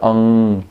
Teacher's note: It's got a little G in it, but you hardly pronounce it. It's like ang, and you finish off at the beginning of a gaga, but you don't say it.